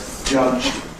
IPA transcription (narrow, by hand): ʤʌʤ̥d̥